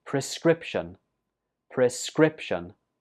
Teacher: This word has 3 syllables and the stress goes on the 2nd syllable.